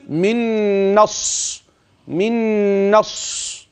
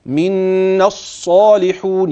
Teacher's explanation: من النون إلى الصاد مباشرة ألف منا حذف، وألف الوسط لا وجود له، واللام أدغمت في الصاد لأنها لام شمسية حكمها الإدغام. يبقى حينما أصل من الصالحون، يبقى كده أنت خدت عمليا حرف المد الثابت في الحالين، مد طبيعي طبعا، حرف المد الذي يثبت وقفا ويحذف وصلا من الصالحون، يعني التقاء الساكنين اتصال.